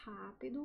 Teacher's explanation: O R forte, né, eh, o som do R forte eh pode ser realizado como vibrante múltipla